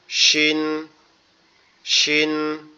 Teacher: একটু শক্ত আওয়াজ হবে, দুই দাঁতের মাড়ি একসাথে চেপে থাকবে